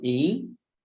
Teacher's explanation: esse in aqui tem só som de i com tio